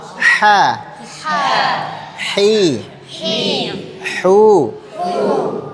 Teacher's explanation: Huruf ha dia di bagian tengah jadi tipis kayak orang kepedisan ya.